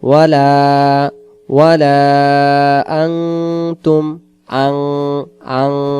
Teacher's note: নুন সাকিনের বাম পাশে তা অক্ষর থাকার কারণে। নুন সাকিনের বাম পাশে যদি তা অক্ষর ইকফাত থাকে তাহলে সে জায়গায় আন না হয়ে আং উচ্চারণ হবে।